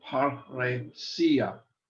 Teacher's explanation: So for example, here we have two rows together, par, roe, and each is pronounced separately, paresia. Notice that the accent is on the sia. And words that end in the last vowel, the second to the last vowel is an iota, generally have the accent on the iota.